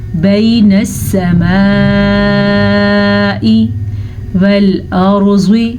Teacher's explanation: را کو پر پڑھیں گے کیونکہ را ساکن سے پہلے زبر ہے